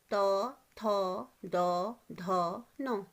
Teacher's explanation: इनका उच्चारण स्थान होता है आपके दांत।